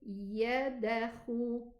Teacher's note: I added a fatha while I'm saying the qalqala.